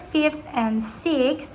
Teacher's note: in the words fifth and sixth, which end with voiceless fricative dental sounds